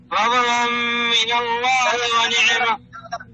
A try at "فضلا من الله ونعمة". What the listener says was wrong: لا مش فضل، لا امسك الضاد، شد يدك لما تنطق الضاد، اقبض على الكفين. فضلا من الله.